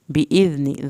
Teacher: دال کو نرمی سے پڑھنا ہے، نون کی زیر کو ہرگز لمبا نہیں کرنا